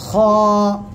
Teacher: গলার শেষ ভাগ থেকে আমরা এই অক্ষরটা উচ্চারণ করব খ এক আলিফ টান হবে মোটা আওয়াজে উচ্চারণ হবে খ সবাই